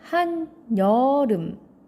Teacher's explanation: 그냥 비어있는 이응여가 아니라 니은여로 발음되죠. 즉 니음 첨가가 발생하죠.